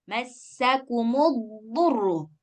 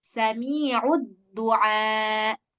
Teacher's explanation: Nah, hati-hati, terutama ketika dha dengan da, terutama ketika dhammah. Kalau dia nggak tebal, jadinya dal. Dha harus tebal. · Tempatnya sama-sama di lisan, tapi yang dhad dia isti'ala, sedangkan dal istifal.